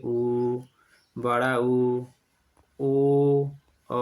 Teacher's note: जिसका उच्चारण करते समय हमारे ओठ गोल हो जाते हैं उन्हें वृत मुखी स्वर कहते हैं